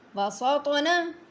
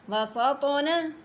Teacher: طا نے موٹا بھی ہونا اور حروف قلقلہ بھی ہے، اس نے ہلنا بھی ہے